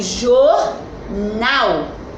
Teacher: a sílaba tônica é o nal a última sílaba